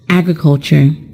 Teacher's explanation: the word agriculture is a noun and it is stressed on the first syllable